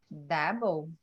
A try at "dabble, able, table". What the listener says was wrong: right. Dabble, able, table.